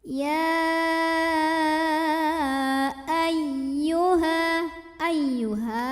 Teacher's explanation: Tidak perlu ditahan, bukan idgham bigunnah. Cukup agak dibentak sedikit ya, dinaikkan intonasinya, namanya nabar.